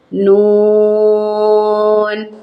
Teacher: Panjang bacaannya untuk mat lazim musakkal harfi sampai 6 harokat